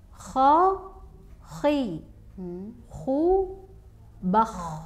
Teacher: O itu hanya kesan yang didapat karena melafalkannya tebal.